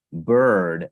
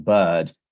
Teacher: there is an R or a rhoticization of the vowels in the American version, but you will see that those rhotic aspects vanish in the British version